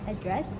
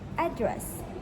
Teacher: American often stresses the first syllable for the noun.